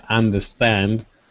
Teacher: the stress is actually on both sides there's actually stress on both syllables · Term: two stresses